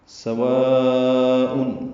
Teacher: سین حروف صفیریہ میں سے ہے، صفیر کی آواز سے جلدی سے ادا کریں گے سین کو